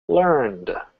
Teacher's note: notice I didn't say Ed at all we're just softly pronouncing or saying the D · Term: voiced D sound